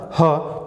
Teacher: ह, कहीं टच नहीं हो रही हवा, ह कंठ से निकल रही है